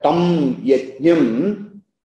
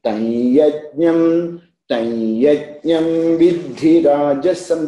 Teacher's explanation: there is an optional prayoga as the tam anuswara change into anunasika. Anunasika nasal.